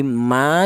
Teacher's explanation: Alasannya ada alif yang didahului huruf yang berharakat fathah panjangnya yaitu satu alif atau dua harakat atau dua ketukan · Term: mad thobi'i